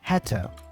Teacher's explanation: Also, the vowel in to is a schwa sound. So we would normally say t instead.